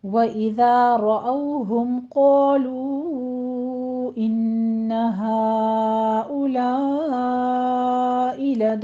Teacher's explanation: रअौ में र मुफ़ख़म पढ़ते हुए औ, वावलीन अदा कीजिए · क़ालू में क़ौफ़ अलिफ दोनों पुर पढ़े जाएंगे, अलिफ मद्दा 2 काउंट कीजिए। लू में मद्दे मुनफ़सिल जायज़ है, हा में भी मद्दे मुनफ़सिल जायज़ है, यहाँ पे 4 काउंट करना है। इन्ना में गुन्ने वाजिबा है, 2 काउंट करना है।